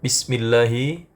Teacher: Bismillahi, lafaz Allah pada kalimat ini dibaca tipis atau tarqiq karena sebelumnya ada huruf berharakat kasroh